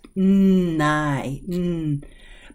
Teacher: gets that Rumble in your nose